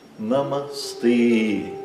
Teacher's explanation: Então é Namastê e esse E é longo. Os 2 A são curtos. Namastê. Exagerando um pouco.